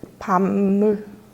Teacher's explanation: 지금 비읍과 미음이 만나서 비읍이 미음이 됐죠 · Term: 비음화